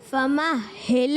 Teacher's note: فَمَهِّلِ ہا کو رک کر ادا کریں کیونکہ تشدید ہے اور یہ مشکل حرف ہے، کیونکہ ہا ویسے ہی تھوڑا مشکل سے ادا ہوتا ہے، مگر آپ اس پر تشدید آنے کی وجہ سے آپ نے کوشش کرنا ہے اس کی ہا کی ادائیگی ذرا ٹھہر کر۔